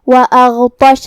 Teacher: غین کی ادائیگی حلق کے اوپر والے حصے سے ہے